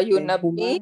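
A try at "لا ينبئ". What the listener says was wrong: Third letter kasra. Yunabbi.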